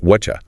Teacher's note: that t plus y combination creates a chi sound. So you get whatcha. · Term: assimilation